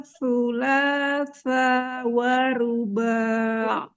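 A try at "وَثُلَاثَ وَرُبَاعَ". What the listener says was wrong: Sa-nya nggak panjang. Wa thulatha. Masna wa thulatha wa ruba'.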